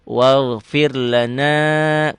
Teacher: Fir rohnya dibaca tipis. Kenapa? Roh mati.